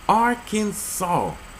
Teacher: The A in each syllable with the Italian sound and the accent of the first and the last syllables